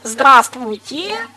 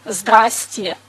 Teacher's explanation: Обратите внимание, по-русски надо сказать «здравствуйте», но мы говорим «здрасте». То есть половина слогов зажевывается.